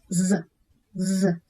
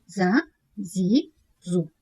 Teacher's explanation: Яғни бұл тілдің ұшын төменгі тістердің жоғарғы жағына жақындату арқылы айтылады. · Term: Зәй әрпі